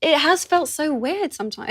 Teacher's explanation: uses a glottal stop to connect the word it to the word has.